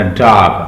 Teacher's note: open your mouth wide as in एंड but gently round your lips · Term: शॉर्ट ओ